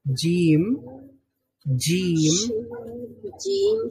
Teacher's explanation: জিহ্বার মধ্যখান তার বরাবর উপরের তালুর সঙ্গে লাগিয়ে উচ্চারিত হয়